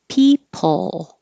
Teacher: Forget about the vowel and the second syllable. Just make the L noise. People. And that helps keep your lips straight.